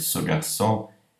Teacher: Mas se eu faço no contexto de uma expressão, por exemplo, ce garçon, este menino, ele fica átono e produz essa vogal E caduco.